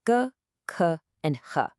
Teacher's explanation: The tongue root sounds come from the very back of your throat, g, k, and h.